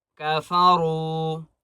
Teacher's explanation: را کو ایک الف کی مقدار کھینچ کر پڑھیں گے اور را کو موٹا کریں گے